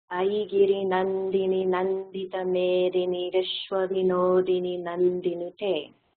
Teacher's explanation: the long vowels are chanted roughly twice as long as the short vowels